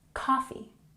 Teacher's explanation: putting the emphasis on the first syllable in coffee